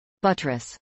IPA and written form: ˈbʌtɹəs (buttress)